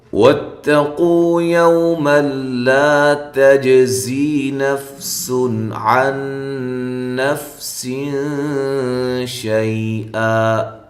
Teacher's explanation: ملا نون تنوین کا ادغام بلا غنہ ہے، غنہ نہیں کرنا · شَيْئًا، واو کو ہونٹوں کو گول کرتے ہوئے تا کو باریک، قو واو مدہ ہے، قاف کو موٹا پڑھنا ہے